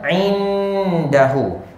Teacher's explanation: Nun sakinah bertemu dengan dal, dengung sebanyak 2 harakat. Ulama-ulama bagi nama ikhfa haqiqi.